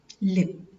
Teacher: The tongue is touching the alveolar ridge, blocking the air, and air passes through both sides. So lateral sound, l.